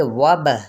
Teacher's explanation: یہاں پہ با پہ قلقلہ ہو جائے گا، ساکن ہے نا